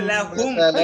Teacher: লাহুম একটা গুণা আছে। এই গুণাটা হচ্ছে মিম সাকিনের বামে মিম আসিলে গুনাহ করিয়া পড়তে হয়